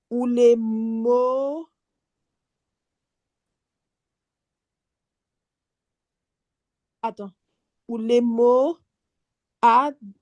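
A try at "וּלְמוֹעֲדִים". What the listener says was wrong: Exactement.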